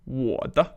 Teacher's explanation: this fifth neutral tone, which really has no emphasis on it